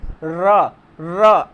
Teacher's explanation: तो आपके जीभ में कंपन हो रहा है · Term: प्रकंपित